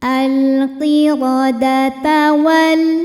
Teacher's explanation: Huruf ra dibunyikan secara tafkhim karena berbaris fathah, maka ra-nya tebal.